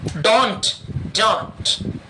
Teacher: तो जब मैं डोंट कहता हूं तो ट नहीं निकलना चाहिए।